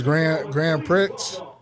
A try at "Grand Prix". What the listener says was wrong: The Grand Prix. You pronouncing the X.